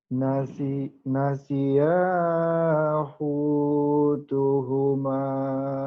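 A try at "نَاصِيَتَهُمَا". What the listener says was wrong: bukan hutu, huta, huta, huta.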